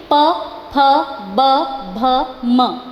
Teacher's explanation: जब हमने अपने लिप्स को ज्वाइन किया तब ये अक्षर हमारे मुंह से निकले